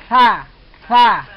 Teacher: Ya, yang huruf pertama yang warna hitam itu sa. Dia ujung lidah ujung di depan gigi atas dengan mengeluarkan sedikit angin.